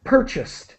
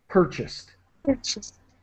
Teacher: So try not to pronounce the A. It's purchased, more like an I sound.